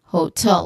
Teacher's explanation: hotel the stress is on tell the stress is on second syllable